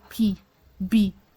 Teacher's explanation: saying for example when you say p b you notice that it's your lips that touch and move and produce the sound or block the air